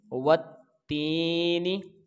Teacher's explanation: واو کو جب ہم پڑھیں گے تو اس کو اوپر والا ہونٹ اور نیچے والا ہونٹ دونوں نہیں ملائیں گے، تو یعنی کہ اس کو بغیر ہونٹ ملائے ہم اس کو واو کو ادا کریں گے۔